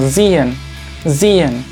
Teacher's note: Esta S está marcada en rojo porque esta S, cuando sigue un sonido vocal como muy marcado, en este caso en, la S empieza como a vibrar, como si fuera un mosquito